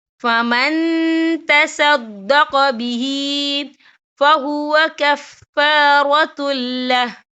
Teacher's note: تو ہم یہ اکفا کریں گے، نون ساکن کی آواز کو ناک میں چھپائیں گے